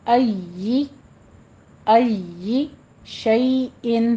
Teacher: یا حروف لین میں سے ہے، اس پر نرمی رکھنی ہے